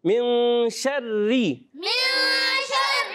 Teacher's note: را مشدد اپنی حرکت کے تابع ہوتی ہے، اب اس را کے نیچے زیر ہے تو یہ باریک رہے گی